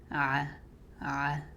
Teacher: Ain comes from the middle of the throat. Makes a constricted sound. It's not deep or heavy. So you smile when you say it.